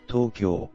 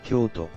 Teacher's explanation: Although the kanji character Kyo, meaning capital, is pronounced the same in both Tokyo and Kyoto, the pronunciation of the To in each name differs noticeably for the average Japanese speaker. In Tokyo, the To is an extended sound similar to To. Tokyo. Meanwhile, in Kyoto, the To is pronounced with a sharper and shorter intonation, lacking the elongated vowel.